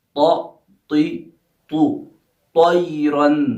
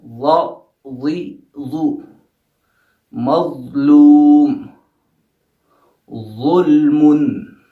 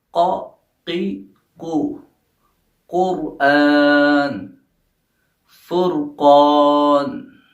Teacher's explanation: حروف استعلاء کے کہ جن کو ہم پر پڑھیں گے، موٹا پڑھیں گے، ہمارا منہ بھرا ہوا ہوگا ان کو پڑھتے وقت۔